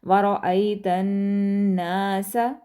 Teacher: نون پر غنہ کریں گے اور الف مدہ کی وجہ سے آ کا ساؤنڈ بھی لمبا کریں گے